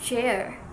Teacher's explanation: it begins like stop, a complete closure, and ends like a fricative one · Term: affricates